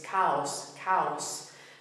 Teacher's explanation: notice as well how the two vowels go straight to one to the other without any intervening Y sound or anything